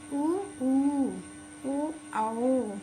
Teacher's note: जिन स्वर वर्णों के उच्चारण में ओठों की आकृति गोल होती है उन्हें वृत्तमुखी कहते हैं।